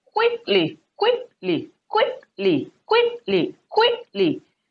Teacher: the stress should be on the first syllable